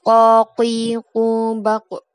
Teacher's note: lidah bagian belakang ini adalah dorso sedang ufular adalah anak lidah lidah bagian belakang bekerja sama dengan anak lidah untuk menghambat udara yang datang dari paru-paru